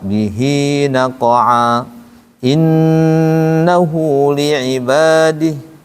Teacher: Kalau yang mad silah sugro 2 harokat, bihi naqa'a innahu li'ibadih, pendek.